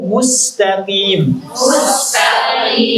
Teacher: tipiskan lafaz huruf sin pada lafaz al-mustaqim